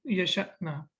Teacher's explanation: yeah, then it's like we have to stop. We have to read it with a small, you know, like jerk or with a glottal stop.